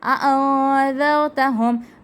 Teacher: نون ساکن کے بعد آ گیا ہے ذال، اخفا کا قاعدہ، ناک میں آواز جائے گی · یہ ذال نرمی والا حروف لثویہ کا یہ حرف ہے